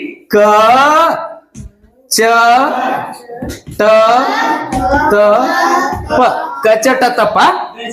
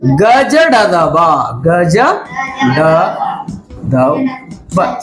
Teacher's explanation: ಕಡಿಮೆ ಉಸಿರಿನ ಸಹಾಯದಿಂದ ಉಚ್ಚರಿಸಲಾಗುವಂತ ವರ್ಗೀಯ ವ್ಯಂಜನಾಕ್ಷರಗಳಿಗೆ ಅಲ್ಪ ಪ್ರಾಣಾಕ್ಷರಗಳು ಅಂತ ಕರಿತೀವಿ